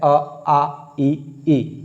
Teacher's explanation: इनको बोलने के लिए कोई आवश्यकता नहीं है नाक की, नाक की आवश्यकता में अंग और अ के लिए पड़ती है। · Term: निरुनासिक